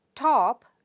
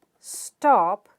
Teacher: top is aspirated right top is aspirated but stop is not aspirated